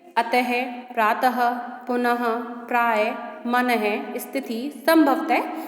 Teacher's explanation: इनका उच्चारण हल्के से हा शब्द की भांति होता है। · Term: विसर्ग